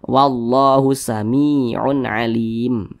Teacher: Huruf ya sukun pasangannya tanda baca kasrah sehingga huruf sebelumnya dibaca panjang. Nah, makanya mi dibaca panjang, mad tabi'i panjangnya 2 harokat